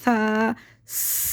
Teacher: سا کو باریک پڑھیں گے، زبان دانتوں سے باہر نکال کے پڑھیں گے، سا۔ سین کو سیٹی سے باریک، سا کو نرمی سے باریک، سا۔